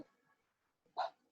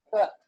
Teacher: Put your hand at your throat and you'll feel the difference. In this one, p, there's no vibration. In this one, b, you feel a vibration in your hand. · This sound p is unvoiced, whereas this sound b is voiced. Put your hand at your throat and you'll feel the difference.